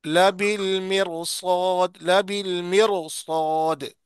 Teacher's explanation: देखो ना, रा के, इसको पढ़ना तो चाहिए बारीक क्योंकि रा से पहले जेर है, लेकिन मोटा पढ़ रहे हैं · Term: रा को मोटा